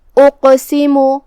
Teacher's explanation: قاف حروف التفخیم میں سے بھی ہے تو ہمیں اسے بھاری آواز میں پڑھنا ہے، جو کہ اس پہ جزم ہے تو یہاں قاف کا حکم ہے قلقلہ۔ قلقلہ کا معنی ہے حرف ساکن کو ہلانا، تو ہم قاف کو ہلاتے ہوئے یہ کلمہ کو ادا کریں گے۔ سین کے نیچے زیر ہے اور میم پہ پیش ہے تو یہ سب حرکات کا دھیان رہے۔ · قاف کی ادائیگی زبان کی جڑ اور تالو کے نرم حصے سے ہے۔ قاف حروف التفخیم میں سے بھی ہے تو ہمیں اسے بھاری آواز میں پڑھنا ہے، جو کہ اس پہ جزم ہے تو یہاں قاف کا حکم ہے قلقلہ۔